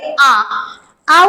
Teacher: উচ্চারণ করে আমরা দেখি আ, আ উচ্চারণকালে তোমরা যদি নিজেরা পড়ার সময় একবার উচ্চারণ করে দেখো যে আ, আ উচ্চারণকালে কিন্তু মুখটা খুলে যাচ্ছে, অর্থাৎ মুখটা বড় হয়ে যাচ্ছে, তাই আকে বলা হয় বিবৃত, অর্থাৎ একেবারে খোলা ধ্বনি।